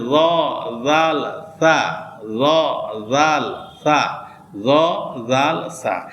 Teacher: এবং 13 নম্বর মাখরাজে আছে জিহ্বার আগা সামনের উপরে দুই দাঁতের আগার সঙ্গে লাগিয়ে